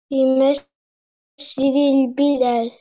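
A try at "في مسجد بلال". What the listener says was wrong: Ohne Lam. Also Messfidi Bilal.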